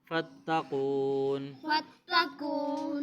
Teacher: قاف کو موٹا بھی پڑھیں گے اور واو مدہ ہے لمبا کر کے پڑھیں گے